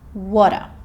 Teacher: the t sound can also sound like it's somewhere between a t and a d sound.